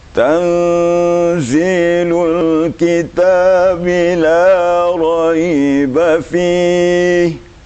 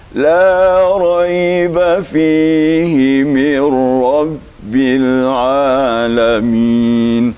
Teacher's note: Tartil itu di awalnya tinggi, di tengah datar, akhirnya turun.